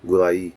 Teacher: Compare gulay where they're pronounced as a diphthong because they're part of the same root and gulay where ai is said as two different vowels because they're part of different roots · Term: two monophthongs